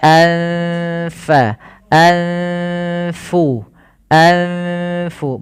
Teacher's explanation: bertemu dengan huruf Fa maka ini kita namakan dengan bacaan Ikhfa cara membacanya yaitu kita menyamarkan suara nunnya teman-teman kepada huruf Fa